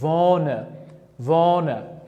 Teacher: H harfini talaffuzdan tushirib qoldirib, unli harfda esa cho'zibroq o'qiyapman.